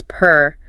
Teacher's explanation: To say purr, you do not just use your lips. You want to feel a little vibration deep in your throat.